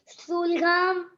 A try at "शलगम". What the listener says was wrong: शलगम बोलते हैं बेटा उसे, शुलगम नहीं बोलते, शलगम।